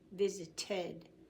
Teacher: this T is so close to D, we can't tell the difference, so we have to say ted, visited. Play, like you play very well.